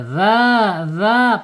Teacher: dia panjang ee mad thbi'i sehingga ee makhrajnya aljaub ya aljaub melalui rongga tenggorokan sampai mulut tidak perlu mampir ke hidung